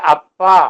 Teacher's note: ഈ ചുണ്ട് കുറെ കൂടി ഉറപ്പിച്ച് പിടിച്ചിട്ട് തുറന്നു വിടുമ്പോഴത്തേക്കും പ എന്നുള്ളത് കേൾക്കും